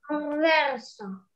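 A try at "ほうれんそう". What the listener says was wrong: Да, правильно.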